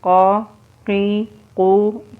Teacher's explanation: قاف زبر قا، قاف زیر قی، قاف پیش قو، قا قی قو۔ قاف بھی موٹا حرف ہے، اس کو بھی پر پڑھیں گے۔